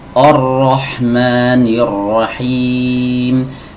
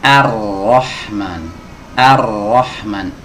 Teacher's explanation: huruf hamzah harus dibaca tipis Adapun huruf ro harus dibaca tebal karena di berharakat fathah ya jangan kita baca seperti ini Hai · A dibaca tipis, ro dibaca tebal